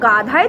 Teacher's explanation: হ ধ্বনির হয় হসন্ত, যে হ ধ্বনির একটি মহাপ্রাণ ধ্বনি, এর মহাপ্রাণতা আগে সরে এসে দয়ের সাথে যুক্ত হয়েছে, এর ফলে দ হয়ে গেছে ধ